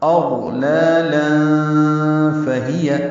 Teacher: اغلالا لام کو پہلے لام پر کھڑا زبر قائم مقام مد اصلی، 2 حرکات لمبا کریں گے، منہ کھولیں گے. اور دوسرے لام پر تنوین ہے، اس کے بعد فا آنے کی وجہ سے اخفا ہوگا